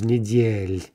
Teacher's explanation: We're just getting rid of the ah. That leaves us with a soft L, right? That L isn't going to suddenly become hard just because we got rid of an ah sound.